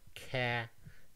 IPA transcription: cæ